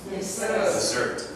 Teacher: Remember the emphasis on the second syllable.